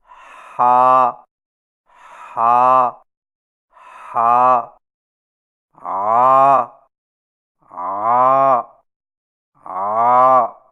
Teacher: ہا اور عین کی ادائیگی میں زبان کی جڑ کو پیچھے حلق کی طرف دبا کر رگڑ کھاتی آواز میں پڑھیں